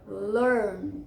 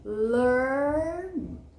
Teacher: É bem fechado mesmo, tá? Enrola bastante o R.